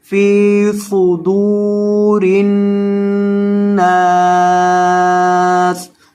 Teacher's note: صاد کو موٹا کریں گے اور دال کو لمبا کریں گے کیونکہ دال کے بعد واو مدہ آ رہی ہے